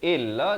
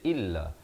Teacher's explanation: Alaikal kitaba illa bukan illa. Hamzah baris kasrah bunyi i bukan bunyi e. Jangan baca illa tapi baca illa.